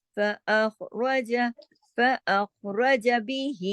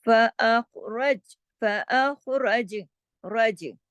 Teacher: ملائیں گے تو نہیں ہوگا کلکلا، روکیں گے تو کلکلا ہوگا